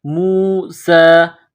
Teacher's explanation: سین کے اوپر کڑا زبر ہے، ایک الف کے برابر اس کو کھینچنا ہے